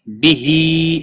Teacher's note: کا الف مدہ ہے، نو واو مدہ ہے۔ بہی ہا کے نیچے کھڑی زیر ہے، ایک الف کے برابر کھینچ کر پڑھیں گے